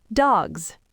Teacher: But if a word ends in a voiced consonant, like the g in dog, you can't easily jump from a voiced G to an unvoiced S, your throat doesn't want to turn off that quickly. So the S automatically turns into a voiced Z sound.